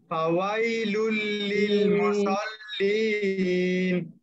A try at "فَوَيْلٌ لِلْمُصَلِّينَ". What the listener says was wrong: মাশাআল্লাহ সদটা আরো মোটা মুসাল না মুসাল্লিন মাশাআল্লাহ আল্লাযীনা হুম বলেন